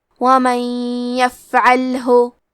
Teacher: کلمت ومن کے آخری میں نون ساکن ہے، پھر حرف الیا ہے کلمت یفعلہ، یا حروف الادغام بغنہ میں سے ہے، تو ہمیں نون ساکن کو یا میں ملا کے غنہ اور تشدید کے ساتھ یہ حکم کو ادا کرنا ہے